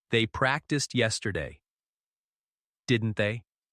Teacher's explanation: using a gentle rising tone at the end to show we're asking a question · Remember to say, practiced, with a soft tone, sound, and lift your voice on, didn't they?